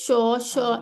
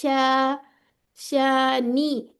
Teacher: होंठ आगे नहीं आनी चाहिए शीन की अदायगी में